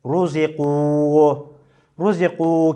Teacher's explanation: ra harfinin harekesi ötre olduğu için ra harfi kalın okunur